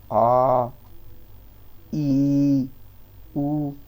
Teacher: ह्रस्व स्वर से दुगना समय लगे तो उसे बोलेंगे भाई दीर्घ स्वर, जैसे आ, ई, ऊ, समय लग रहा है तो ये क्या हुआ, ये हो गए आपके भाई दीर्घ स्वर।